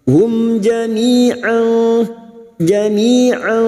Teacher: Hum mim sukun bertemu jim idhar syafawi. Mim sukun dibaca jelas tanpa mendengung.